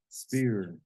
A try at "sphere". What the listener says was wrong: Sphere. You don't say spear. The P is silent. How you say phone? How you say phone? Sphere. Sphere. Sphere.